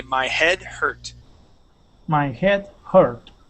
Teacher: when we pronounce those H's, it's actually really quiet